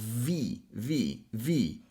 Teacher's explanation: use your voice to create vibration in your throat. If you don't, it becomes an F sound because the shape is the same. The only difference is the voice. So we need voice here.